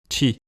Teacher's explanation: ce ti peut facilement devenir une consonne affriquée, chi. C'est la fameuse affrication que les médias français ont découverte il y a 1 ou 2 ans. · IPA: [t͡ʃi]